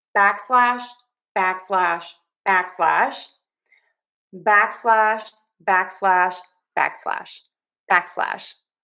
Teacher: So stress syllable number one back unstress slash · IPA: /ˈbæk.slæʃ/